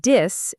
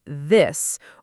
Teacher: For D and T, the tongue touches behind the top teeth, but for TH, the tongue tip goes slightly between the teeth, not behind them.